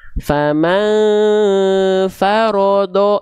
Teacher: Huruf ro tebalkan, do tebalkan tanpa memonyongkan bibir dua-duanya. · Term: huruf tebal